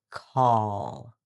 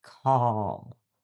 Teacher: Now the dark L is in the back and it's a heavier sound. Your tongue tip may not touch the top. Instead, the back of your tongue lifts, creating a deeper sound, sometimes like a O or even a W.